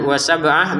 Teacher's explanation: kemudian wa sab'ah, ba-nya dipantulkan.